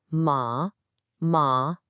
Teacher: It's a falling rising tone. It dips down and then comes back up like a scoop in your voice. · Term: third tone